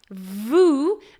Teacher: you have air flowing okay and you need to have your voice active in order to sing that particular consonant